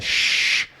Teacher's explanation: So anything where there's like something getting in the way, like a shh, right? Your tongue is getting in the way of the sound. It's coming out sort of as a hissing noise.